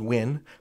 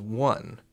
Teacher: So that vowel shift goes from ih, to uh.